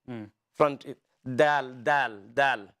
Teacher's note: When you're pronouncing dal, your tongue touches the front of your palate.